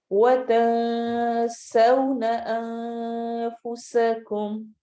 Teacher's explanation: یہاں پہ نون کو چھپا کے پڑھنا ہے، آواز کلیئر نہیں ہوگی